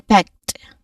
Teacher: So you say it firmly. There's a short a vowel sound in there and a consonant cluster of the sounds k and t. So say the t clearly.